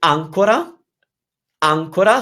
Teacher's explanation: If you say ancora, ancora, so you're stressing the first a